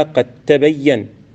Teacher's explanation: والدال من قد تدغم في التاء بلا خلاف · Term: إدغام